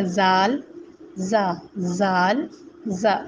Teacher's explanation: جب تک آپ ذال کا مخرج سے نہیں نکالیں گے تو ہماری زال اور زا دونوں کا آواز ایک جیسے نکلتی ہے. جیسے کہ میرے بولنے سے بنیا زال، زا، زال، زا، جبکہ ذال کا مخرج ہے ذال.